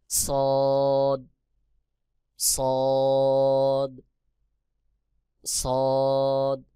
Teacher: জিহ্বার আগা সামনের নিচের দুই দাঁতের পেট ও আগার সঙ্গে লাগাইয়া সদ উচ্চারণ হবে